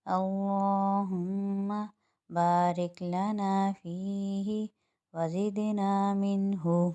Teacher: اللہم میں اللہ کا نام موٹا پڑا جائے گا، ہما میم مشدد آ رہا ہے، ایک الف کی مقدار غنہ کریں گے